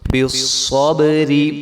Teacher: کے ساتھ ملائیں گے تو صاد کو موٹا پڑھیں گے، اور جب صاد کو ہم با کے ساتھ ملائیں گے تو با کے اوپر جو ہے وہ کلکلا ہوگا